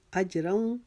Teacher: یسألکم اج, جیم کے اوپر قلقلہ کریں گے کیونکہ جیم کے اوپر جزم آ گئی ہے. اجروں, را کے اوپر جو 2 زبر کی تنوین ہے اس کو واو کے اندر ملا دیں گے